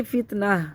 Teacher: وقف کر لیا، وقفی صورت میں پڑھیں گے فتنہ، وقفی صورت میں تا ختم ہو گئی اور گول تا ہا ساکنہ سے بدل گئی ، تا بھی ختم ہو گئی، پیش بھی ختم ہو گیا،